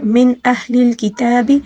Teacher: نون ساکن ہے، نون ساکن کے بعد اظہار حلقی ہے